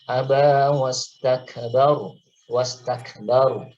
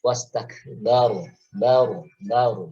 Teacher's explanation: Jadi ada praktek tafkhim yang harus kita berikan di situ, haknya dari huruf ro. Jadi tidak datar bibirnya ya, agak diangkat. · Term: ro yang dibaca tafkhim